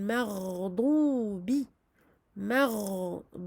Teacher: Le ghayn est donc une lettre rikhwa. Comme vous avez pu l'entendre, je lui donne son temps d'écoulement du son.